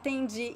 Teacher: this is a very common reduction instead of saying entenji we say tinji